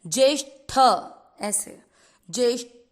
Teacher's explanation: कई बार हमको उच्चारण में पता नहीं चलता कि हम ट बोल रहे हैं कि ठ बोल रहे हैं। ठ पे थोड़ा सा आघात लगता है